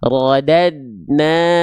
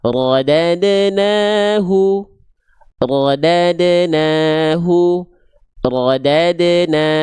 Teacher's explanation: Contoh rodadnahu ah enggak bisa rodadnahu bisa, tapi enggak sempurna. Makanya karena dalnya di sini dalam kondisi sukun dipantulkan · Huruf dal harus mantul karena ada sifat kolkolah. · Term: qalqalah